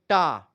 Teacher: टा बोलेंगे तो जीभ एकदम से मुड़ करके एकदम पिछवा जाकर के टच होती है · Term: मूर्धा